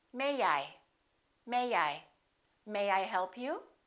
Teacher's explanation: Let's put the little Y in there.